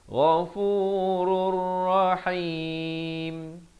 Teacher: Di sini tanwin bertemu ra, idgham bila gunnah. Daripada ghafurun jadi ghafurur, terus masuk tanpa dengung.